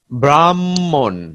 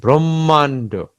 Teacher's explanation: দ্বিতীয় মটা একটু টেনে পড়তে হচ্ছে